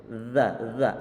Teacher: Zal memang ada angin yang keluar, cuma tidak sekuat huruf tha-nya. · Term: sifat jahr